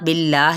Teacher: جلالہ باریک پڑھا جائے گا یعنی لام اس کا موٹا نہیں پڑھا جائے گا